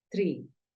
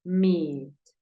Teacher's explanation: la doble E tiene un sonido como una I, pero es un poco más alargada. Recuerda que yo te la describí como un sonido un poco más continuo, tiene continuidad.